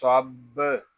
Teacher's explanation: صاد با زبر صب، یہاں صاد اس کو پر پڑھیں گے، با مشدد ہے، اس کو جماؤ کے ساتھ ادا کریں گے